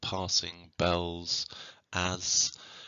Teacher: We've also got in here sibilants, the consonants of the S sounds